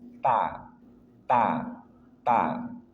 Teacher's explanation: ada huruf ta ujung lidah dari permatasnya bertemu dengan gusi gigi seri atas